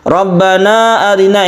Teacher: Robbana Arina ini kita panjangkan sebagai Mad Jaiz munfasil Jaiz artinya boleh munfasil artinya terpisah antara Rabbana dan Arina kita